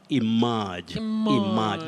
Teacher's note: we have what we call the long mid-central sound